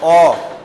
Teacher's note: ओ में होंठ वृत्त के समान बन रहे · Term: वृत्तमुखी